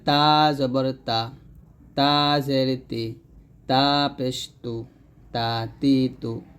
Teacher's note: জিহ্বার আগা সামনের উপরে দুই দাঁতের গোড়ার সঙ্গে লাগাইয়া পড়তে হয়